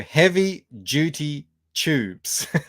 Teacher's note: I say tubes with a ch sound, and I say, I guess what you would call it duty, as in duty with a J.